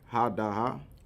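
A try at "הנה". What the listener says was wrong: Hanaha. That's a na. A short looking thing.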